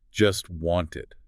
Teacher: the speaker doesn't pronounce the t sound in either word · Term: consonant reduction